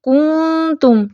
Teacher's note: اگر اس بات کی احتیاط نہ کی جائے اور کاف مدموم کے ساتھ نون اخفا پر بھی ہونٹوں کو گول رکھا گیا تو اخفا میں واو مدہ کی آواز آئے گی۔